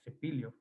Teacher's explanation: As there's no th sound, which is spelled with a C in Spanish, pronounced like TH in English, th, of course, in the Philippines and also in Mexico and other Spanish American countries, this is pronounced s with an S. And in the case of Tagalog, it's spelled with an S, actually, literally, like cepillo, for example.